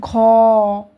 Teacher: বেশি করে শ্বাসবায়ুতে চাপ দিতে হচ্ছে